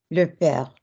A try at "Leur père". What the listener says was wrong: It's still blah, blah. So the vowels are gorgeous, but it's still blah, blah. If you're pushing on the chest properly for me, it will come across as one word. Leur père.